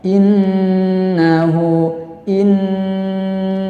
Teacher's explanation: Kemudian yang terakhir innahu, nun jangan ditekan. Huruf nun dan mim tasydid tidak ada nabrohnya di situ. Jadi dibaca gunnah, ditahan 4 harokat.